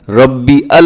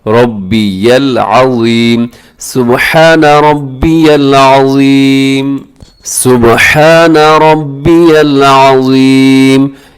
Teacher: یا کو لام کے ساتھ ملے گا